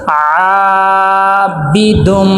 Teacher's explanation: عین کو ایک الف کے برابر لمبا کریں گے۔ عابی، با کے نیچے زیر ہے اور زیر حرکات غیر مدہ میں سے ہے۔